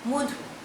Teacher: আমি একটা শব্দ বললাম মধু, ময়ের পরে অ আছে, কিন্তু এখানে ময়ের উচ্চারণটা, ময়ের পরে অয়ের উচ্চারণটা ওয়ের মতন হয়েছে